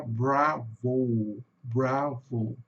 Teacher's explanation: esse som no final do O aqui é som de o U. Então vai ficar bravo.